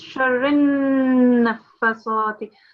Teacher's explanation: So it's sharri. And then the ra has to be connected to the noon mushaddad as well. So it's sharrin nafasati.